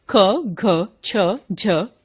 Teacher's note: जिन व्यंजनों के उच्चारण में श्वास वायु अधिक मात्रा में बाहर निकलती है उन्हें महाप्राण व्यंजन कहते हैं